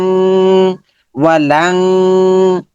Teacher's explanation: তার লান এবং তাসদিদ না থাকলে আমরা কি বলেছিলাম যে অনুস্বরের মতো হয়ে যাবে, লান থেকে হয়ে যাবে লাং। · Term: গুণনা